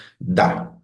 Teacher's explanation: ejercicio y cuando pronuncian da se van a dar cuenta que están tocando e con la lengua los dientes por eso es Dental